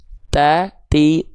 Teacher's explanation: huruf ta itu dilafalkan dari ujung lidah